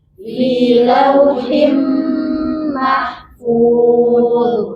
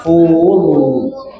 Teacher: Ingat di terakhir dha bukan zal. Mahfuz tebal.